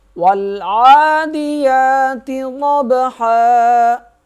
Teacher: واو جو ہے لام سے مل جائے گا، درمیان میں یہ الف لکھا ہوا ہے، یہ نہیں پڑھیں گے۔ عین کے اوپر کھڑا زبر ہے، اسے 1 الف کے برابر کھینچیں گے۔ یا کے اوپر کھڑا زبر ہے، اسے بھی 1 الف کے برابر کھینچ کے پڑھیں گے۔